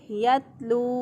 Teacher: ता को बारीक पढ़ेंगे